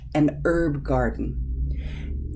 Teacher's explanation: In American English, we say this herb as a silent H.